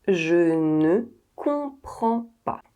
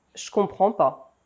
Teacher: ne is often dropped off when the French speak, so you're most likely to hear pas